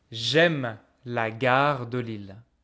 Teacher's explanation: I removed the e in front of a vowel to merge the sounds together